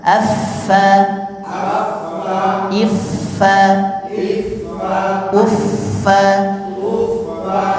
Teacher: menempelnya gigi seri dengan bibir bagian bawah sambil dihembuskan anginnya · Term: huruf Fa